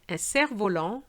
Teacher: You will notice that I haven't pronounced the F